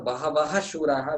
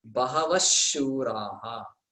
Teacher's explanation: that visarga should gain the pronunciation of the following letter shakara. So it is like two shakaras there.